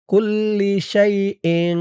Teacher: একটু গুন্না হবে, ইকফা গুন্না